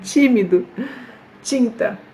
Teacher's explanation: le T suivi de I, ça donne ce petit son là, qu'on dirait qu'il y a un petit J ici.